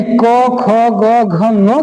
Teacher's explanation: क वर्ग का उच्चारण स्थान कंठ से होता है